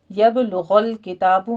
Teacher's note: با کے پر قلقلہ کرنا ہے، غین کو پر پڑھنا ہے